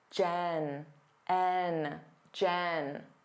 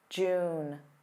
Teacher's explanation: The first part of my name, Jen, and the month, June. Notice how my mouth opens wider when I say Jen, Jen. And it stays in a more closed position when I say June